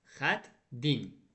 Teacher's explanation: Qoşa t-tı heç birisi düşmədi. İkinci t tələffüzdə d-yə çevrildi.